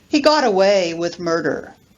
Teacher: a stressed verb plus a stressed particle plus an unstressed particle